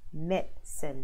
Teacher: the I in the middle is not pronounced